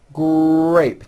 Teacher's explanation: It is important to understand that the R sound is the strongest sound of the blend, and your lips often come forward before you even say the word. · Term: R blends